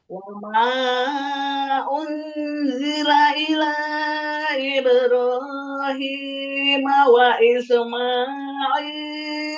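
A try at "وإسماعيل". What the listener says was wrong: Wa Ismail jangan diseret. Wa isma enggak. Wa Ismaila.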